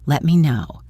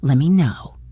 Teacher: Let me is frequently reduced to lemme. You just soften the T sound.